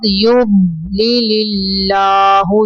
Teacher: یض یض نہیں کرنا، ضاد کو کلکلا نہیں کرنا